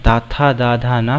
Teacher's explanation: दंत व्यंजन कहते हैं ता, था, दा, धा, ना को, क्योंकि इनको बोलने के लिए हमारी जीवा दांतों से स्पर्श करती है।